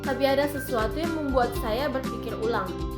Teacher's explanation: variasi intonasi yang ketiga yaitu nada datar di tengah kalimat, yang dimana menunjukkan informasi yang netral.